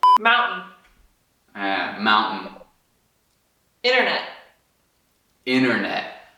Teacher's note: Se você reparar, o T está sumindo completamente.